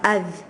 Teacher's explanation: The tongue touches the teeth when we tip of the tongue touches the front two teeth, saying that sound adh